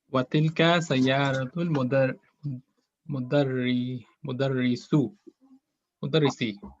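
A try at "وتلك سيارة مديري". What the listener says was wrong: Where's the scene? There's no sin. It's mudiri. Mudiri.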